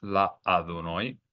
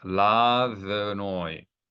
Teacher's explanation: That's to let you know that although there is an aleph in the word Adonai, but here the aleph is not a sounded aleph. It is not a glottal stop. Why? Because there is no vowel associated with the aleph in this case.